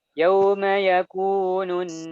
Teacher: yang ditahan itu, yang gunnah itu huruf nunnya saja